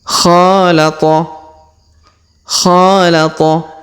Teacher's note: huruf ko kita panjangkan dua harakat karena di depannya terdapat Alif